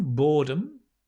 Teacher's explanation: the noun boredom right boredom stress on the first syllable boredom there's a lot of boredom during the lockdown and the verb